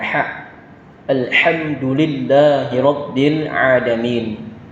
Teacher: ada huruf ha kecil, yang mana ini biasa kita ucapkan sama dengan keluar hurufnya di huruf ain tadi, yaitu di pertengahan tenggorokan kita, yaitu pengucapannya adalah ha.